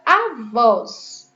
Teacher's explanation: A palavra avós termina em os e o acento é agudo, porque o som é aberto.